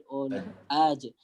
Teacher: Dia akan nampak, lidah kita akan rasa aj. Lidah waktu sebut aj, lidah kita rupanya dekat tengah, dia nak pergi ke arah lelangit. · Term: huruf jim